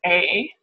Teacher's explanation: And we can call it a front because that first vowel, A, is like a mid-front vowel, and as that tongue moves, it sort of stays in that front area throughout. So it ends up in a direction of the vowel here, I. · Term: front mid-closing diphthong